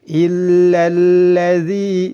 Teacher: zi panjang 2 harakat, dihukumi mad tabi'i.